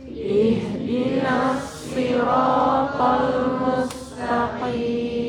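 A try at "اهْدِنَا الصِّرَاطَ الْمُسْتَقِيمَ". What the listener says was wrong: Mudhammakan sinnya kembali ini. Al-mustaqim. Qi, bukan ki ya. Kalau ki jadi kaf.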